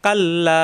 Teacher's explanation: লামে জবর বাম পাশে খালি আলিফ এক আলিফ টান মাদের হরফ মাদের হরফের বামে আসছে লম্বা হামজা এজন্য তিন আলিফ টান হবে